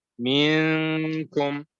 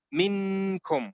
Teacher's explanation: you hide the sound in your nose. And you move towards the makhraj of kaf, which is the back of the tongue. · So your tongue does not touch the makhraj of noon. It comes close to it. And then you hide the sound in your nose. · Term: hide the noon